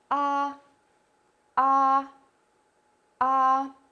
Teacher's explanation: English sounds are more closed and rounded, while in the Russian version you don't need to round your mouth so much, but the corners of the lips should be a wider distance from each other, like A, A, A.